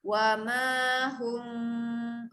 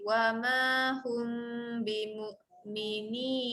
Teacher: bacaan ikhfa syafawi, hampir rapat bibir, dengungkan panjang.